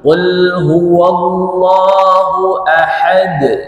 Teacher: huruf Dal Dal itu punya sifat sudah kita kenal namanya Qalqalah harus memantul Qul huwallahu Ahad itu pantulannya dan sifatnya tak boleh mengalir nafas